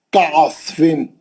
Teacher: आयन को अच्छा पढ़ेंगे, स्वाद मोटा पढ़ेंगे